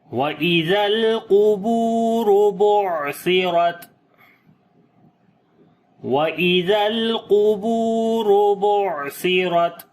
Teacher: تا کے اوپر صفت شدت اور ہمس کریں گے، پہلے صفت شدت ہوگی پھر ہمس · عین کو گلے کے درمیان والے حصے سے پڑھیں گے اور عین کے اوپر بھی صفت توسط ہوگی، عین کی آواز کو ہلکا سا جاری کریں گے ، زیادہ نہیں، درمیانی پوزیشن کے ساتھ، سا کو نرم پڑھیں